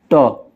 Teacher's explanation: मूर्धन्य अल्पप्राण अघोष वर्ण होता है